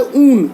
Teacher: असल में यह है ऊन, दीर्घ ऊ और दंत्य न